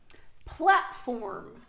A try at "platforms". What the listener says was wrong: Z. On entend le Z à la fin, mais il est atténué, mais on l'entend quand même.